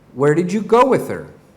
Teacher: the function words kind of trail off they are given much less stress than content words